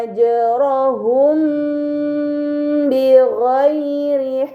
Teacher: mim sukun dibaca secara samar dengan gunnah yang dipanjangkan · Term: ikhfa syafawi